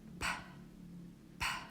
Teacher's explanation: If it's at the beginning, we say p, p. It's an aspirated sound, meaning there is a puff of air